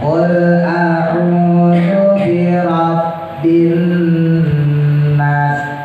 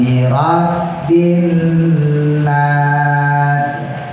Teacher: Nah berhubung nunnya tasdid ya, karena nun itu punya sifat guna, maka jangan langsung dimasukin binas, jangan, tapi ditahan minimal 2 ya